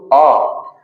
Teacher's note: तो डायरेक्ट आवाज एकदम अंदर से निकल रही है। अपनी कहीं-कहीं से कुछ टच नहीं है। किसी की सहायता नहीं है। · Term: स्वर वर्ण